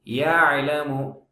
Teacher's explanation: ஐன் கட் பண்ணக்கூடாது யலமு என்று சொல்லக்கூடாது யஹலமு அப்படின்னு சொல்லக்கூடாது யாலமுது மாதிரி யாலமு சாஃப்டா சொல்லணும் யாலமு ரொம்ப அழுத்து யாலம் அப்படிலாம் சொல்லக்கூடாது